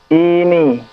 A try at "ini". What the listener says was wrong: Kenapa i-nya panjang? Ini. Ini atau ini?